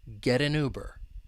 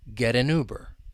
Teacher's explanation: It'll turn into a flap T, and then linking can occur. We can link that flap T with the vowel sound in an, and then we can link that final n sound with the vowel sound in Uber.